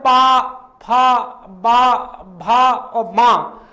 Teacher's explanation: इन वर्णों से हमारे होंठ, ऊपर वाला होंठ और नीचे वाला होंठ टच होता है। तो इससे ये ओष्ठ व्यंजन कहलाते हैं।